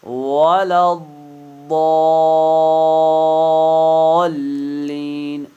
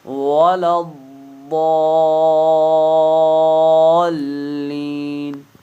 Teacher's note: لام پر تشدید ہے تو یہاں پر مد لازم ہے، تو 5 سے 6 حرکات کے برابر پڑھنا لازم ہے